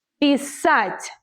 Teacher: The stress is on the last syllable, because if you put it on the first one and say pisat', then it will change the meaning completely.